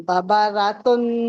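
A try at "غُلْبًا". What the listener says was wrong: गाइन को मोटा कीजिए, गौब है, गौब है। एक मिनट पहले मेरी आवाज सुनिए, गौब है।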